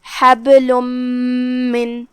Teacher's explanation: حبل، آخر میں لام پہ تنوین پیش ہے اور اس کے بعد حرف المیم آتی ہے کلمت من میں، جو کہ یہاں حکم ہوا ادغام بغنہ، اور ادغام کا معنی ہے حرف کو حرف میں داخل کر دینا، لہذا ہم یہ تنوین کو میم میں داخل کر کے غنہ کے ساتھ اور تشدید کے ساتھ یہ حکم کو ادا کریں گے